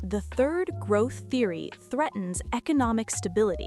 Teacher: The, tongue between teeth, air flows over. Third, TH sound at the beginning of the word. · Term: TH sounds